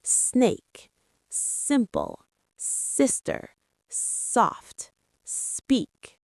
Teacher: S sound, no throat vibration. · The S sound is voiceless. That means your throat does not vibrate. Just air comes out, like a snake.